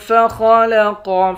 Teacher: خا اور قاف ان دونوں حرف کو موٹا پڑھیں گے